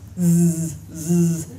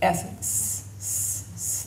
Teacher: It should vibrate. You should feel the voicing here. It will vibrate Z, as opposed to if you just say S, S. There's nothing. Okay, so S is voiceless.